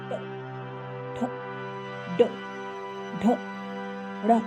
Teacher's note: इसमें क्या हो रहा है, जीभ मुड़ रही है, मुड़ के ऊपर की तरफ टकरा रही है। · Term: मूर्धन्य वर्ग